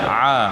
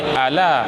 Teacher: Dia jangan bunyi ala. Ala jadi huruf alif hamzah. Dia huruf ain.